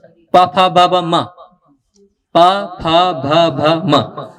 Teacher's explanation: म का उच्चारण होठ से होता है, पा फा बा बा मा, पा फा भा भा मा, उसका उच्चारण होठ से होता है।